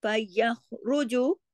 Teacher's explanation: यह जमाओं के साथ खा मोटा और गले में खराश आनी चाहिए , फयखरु, रा भी यहाँ मोटा पड़ जाएगा, यखरुजु, जीम बारीक,